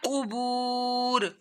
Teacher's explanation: واو ساکن سے پہلے پیش آ رہی ہے تو واو مدہ کرنا ہے.